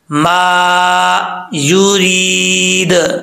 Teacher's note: या साकिन से पहले जेर तो यामद होता है, एक अलिफ की मकदार इसको लंबा करके पढ़ेंगे। लास्ट पे दाल जो है जब वक्फ करेंगे तो साकिन हो जाएगा, तो इसमें जब हरूफ कलकला साकिन हो उनमें कलकला होता है, तो ये दाल साकिन हो जाएगा और यहां पर कलकला करेंगे, यूरीद, ओके।